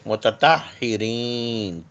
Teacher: تے اور تو دونوں آس پاس کے مخرج سے ادا ہوں گے